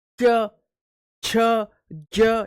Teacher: आप इनको बोलो ऐसे लग रहे हैं जैसे रगड़ा खा करके निकल रहे हो जीभ से। च, छ, ज, यानी जीभ घिस्सी रही है साथ के साथ, तो इसलिए इनको क्या कहा जाता है, इनको क्या कहा जाता है, स्पर्श संघर्षी।